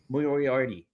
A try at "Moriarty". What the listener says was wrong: Nope, you're adding extra letters.